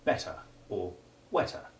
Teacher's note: the sound made by E in the comparative ending ER, as in better or wetter, the letter R being virtually silent and less followed by a word beginning with a vowel, as in better endings, compared with better sense. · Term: short e2